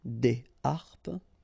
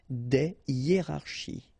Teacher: you don't make the liaison between the two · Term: H aspiré